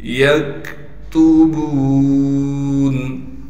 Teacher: تا کو باریک کر کے پڑھیں گے، موٹا نہ پڑھا جائے